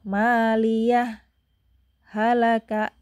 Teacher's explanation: maliah berhenti sebentar tanpa napas baru halaka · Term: saktahnya